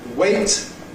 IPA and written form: weɪt (wait)